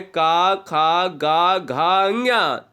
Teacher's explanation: जो व्यंजन कंठ से बोले जाते हैं वो कंठी स्पर्श व्यंजन कहलाते हैं, जिनकी संख्या 5 होती है।